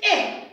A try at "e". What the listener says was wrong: Eh. Eh. Eh. Eh. Eh. Eh.